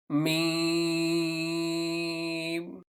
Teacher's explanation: अगला हर्फ है मीम दोनों होठों के खुश्क हिस्से से अदा होता है खुश्क हिस्सा ये जो बाहर वाला हिस्सा है होठों का ऊंटों · تھوڑا سا ہونٹوں کو دبا کر خشک حصوں کو آپس میں ملا کر آپ میم کو ادا کریں گے